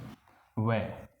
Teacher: व का उच्चारण स्थान है दंत और ओष्ठ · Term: दंतोष्ठम